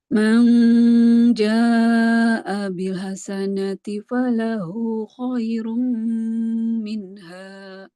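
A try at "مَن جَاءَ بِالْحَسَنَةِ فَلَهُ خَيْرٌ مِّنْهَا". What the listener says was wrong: Bagus. Terus.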